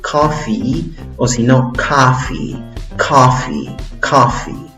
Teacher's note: La primera sílaba tiene una O o también puede tener una O, una A fuerte, ¿ok? Y en la segunda sílaba tienes el sonido de una I larga, no es una I corta, es una I larga y fuerte